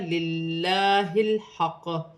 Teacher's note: للہ کی لام سے پہلے زیر ہے تو لام باریک پڑھی جائے گی۔ ہا لام ساکن ہے، لام کو ہا کی حرکت کے ساتھ ملا کر پڑھا جائے گا، للہ الحق۔ قاف موٹے حروف میں سے ہے، مشدد ہے، وف کی صورت میں زیر گر جائے گی اور قاف ساکن ہو جائے گی، وف کی صورت میں قلقلہ پیدا ہوگا، حق۔